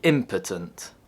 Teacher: if you accidentally put the stress on the first syllable, you say impotent